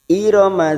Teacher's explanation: Irama dza fathah bertemu alif 2 harokat